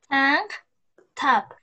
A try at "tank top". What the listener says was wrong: La segunda T me la dijiste como que con menos explosión. Tap. Tank tap.